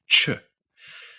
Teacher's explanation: Ch sounds a lot like ch in English. English's ch sound is made of a T sound and a sh sound, which combine and both involve your tongue touching your alveolar ridge